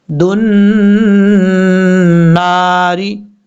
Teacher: نون کے اوپر شد ہے، غنہ کریں گے ایک الف کی مقدار، اور الف بھی لمبا کیا جائے گا ایک الف کی مقدار۔